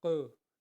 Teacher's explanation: قلقلہ کے آواز کو تھرا کر پڑھنا ہے